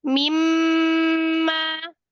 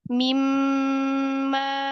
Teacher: Di mim guna jangan ditekan tapi ditahan. Bukan mimma, bukan ditekan tapi ditahan.